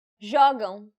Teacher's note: the stress should be on the second to last syllable, which in this case happens to be the first syllable